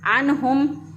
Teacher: आइन को वस्ता हलक से अदा किया, अन्हुम। नून साकिन के बाद देखा तो हरूफ हलक़ी आ गया।